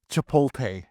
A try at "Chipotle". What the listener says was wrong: The T is silent, buddy.